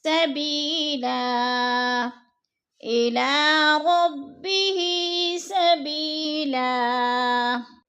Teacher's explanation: وقف کی صورت میں ہم نے دو زبر نہیں پڑھنے بلکہ دو زبر کو ایک زبر میں بدل کر پڑھنا ہے۔